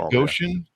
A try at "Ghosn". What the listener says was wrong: Actually, he pronounces it Ghosn, like a long sound, like rhymes with bone or phone. But I think in certain corners of the Middle East, it is pronounced the way you're suggesting. But in the automotive world, it's a long O sound, Ghosn.